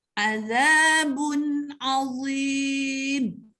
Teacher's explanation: Ba itu bertanwin bertemu dengan huruf ain, maka sebutannya hendaklah jelas. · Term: izhar halqi